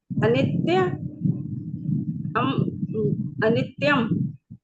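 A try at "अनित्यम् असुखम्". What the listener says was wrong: नहीं नहीं अम नहीं, पूरा म है, म सुखम।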